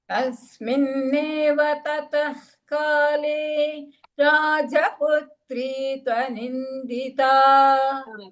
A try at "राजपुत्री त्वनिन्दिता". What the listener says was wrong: there is a dvitva there राजपुत्री त्वनिन्दिता so putrit त्वनिन्दिता राजपुत्री त्वनिन्दिता पुत्रीत्